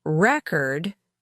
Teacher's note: Record, with the stress on the first syllable, means a document or a piece of music, while record, with the stress on the second syllable, means the act of recording something